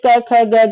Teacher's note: कंठ से क ख ग घ बोले जाते हैं